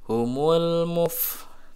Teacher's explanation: ini huruf fa sukun, ya, ada udara yang keluar, hamas, ya. Muf, ingat makhraj huruf fa, gigi seri atas menyentuh bibir bawah bagian dalam.